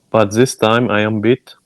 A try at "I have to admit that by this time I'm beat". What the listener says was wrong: Not but this time, by this time.